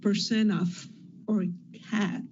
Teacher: you put your tongue in the position to produce a T, but sometimes you don't even say it. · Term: unreleased T